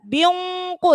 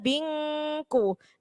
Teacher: Ketika mendengung, kof itu huruf tebal. Jadi ketika mendengung sudah siap-siap mengucapkan huruf kof. Maka ketika mendengung pun sudah harus tebal. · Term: ikhfa